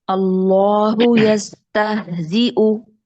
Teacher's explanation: अल्लाहु यस्तहज़िउ लाम इसमें जलाला में जो लाम है मोटा रखेंगे। यस्तहज़िउ हमजा को हमने मुहक्कक पढ़ना है और हा की साउंड गले से निकलेगी